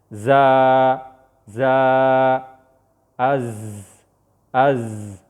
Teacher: د زا مخرج کله چې د ژبې سر د کتني غاښونو چې ثنایا سفلا ورته وایي د هغې سره سره بره غاښونو سره ولګي نو د دې نه زا ادا کېږي. او دغه شان د زا سین او صاد دا یو مخرج دی.